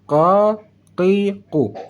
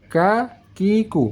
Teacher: suaranya lebih tebal daripada bacaan huruf kaf